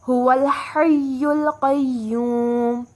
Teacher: ہا وسط حلق سے ادا ہوگا